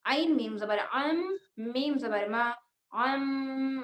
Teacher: حرف عین کو ہم حلق کے درمیانی حصے سے ادا کریں گے اور جب عین کو ملایا جائے گا میم میں تو ہم یہاں پر غنہ کریں گے, وہ بھی 100%.